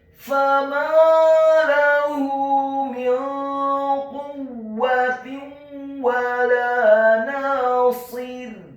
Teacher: Kemudian kata nasir, huruf nunnya dibaca tipis tarqiq fathah 2 harakat karena setelahnya ada alif. Huruf shadnya dibaca tafkhim tebal kasrah 1 harakat dengan posisi bibir bawah kita agak tertutup, dan di akhir ayat huruf ra-nya dibaca sukun dan dibaca tipis, tidak tebal atau tafkhim, karena sebelum huruf ra yang sukun adalah huruf yang harokatnya adalah kasrah.